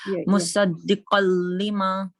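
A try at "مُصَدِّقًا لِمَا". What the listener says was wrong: اب قاف ٹھیک ہے.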